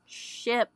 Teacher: Spanish lacks certain sounds that are common in English for instance the English sh sound as in sh ship does not exist in standard Spanish